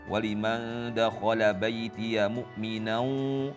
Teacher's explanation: ghunnah nya dengung dari hidungnya itu juga kurang terdengar tadi